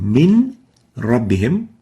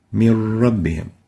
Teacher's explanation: So instead of saying min rabbihim, we'll say mir rabbihim. No nun would be pronounced, only a ra, and the ra will be like duplicate ra. It has shadda. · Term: idgham